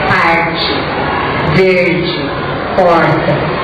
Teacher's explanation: Esse R retroflexo está em quase todo o Paraná.